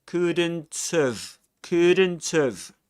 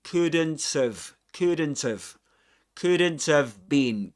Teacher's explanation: he connects the final T at the end of couldn't with a schwa in have. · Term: catenation